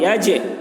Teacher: با کی آواز ڈبل نکلے گی، جیسے عبدہ الکتاب ولم یج، جیم میں بھی قلقلہ ہوگا، یج یعنی ڈبل آواز نکلے گی